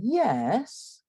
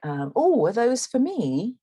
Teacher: a feature of English intonation that you don't get so much in American English is called the full rise